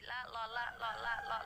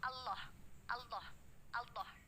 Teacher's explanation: Maka akan terdengar suara lam jalalah tafkhim, tidak waw.